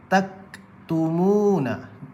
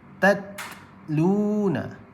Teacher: Jadi huruf ta dan huruf kaf ni dia syiddah dan dia hamas. So dia akan tahan suara kemudian lepaskan angin sikit.